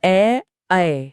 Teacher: और हाँ, कुछ स्वर ऐसे हैं जो 2 स्थानों के मेल से बनते हैं, जैसे ए और ए। ये कंठ और तालु दोनों की मदद से बोले जाते हैं।